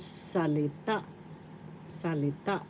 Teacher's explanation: The accent is in the third syllable